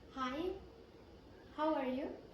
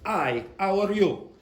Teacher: the Italian or the French speaker will take off the H and they'll go, I, how are you?